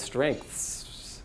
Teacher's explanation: There's even like a hidden K in there when you pronounce it that we don't write.